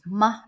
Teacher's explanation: soft tone, is the no tone, very gentle, short tone.